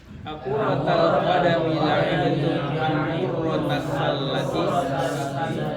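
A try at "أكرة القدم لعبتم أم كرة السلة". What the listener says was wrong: Baik, sering ya, terkadang ya didapatkan seorang salah dalam baca kuroh, rohnya itu tidak ada tasdidnya, bukan kurroh, tapi kuroh. Ya, nggak pakai tasdid. Kuroh, kurotul qadam, kurotus salah. Sering seseorang membaca dengan kurroh karena mengikuti kata qurratu aini. Pakai qaf, qurratu aini.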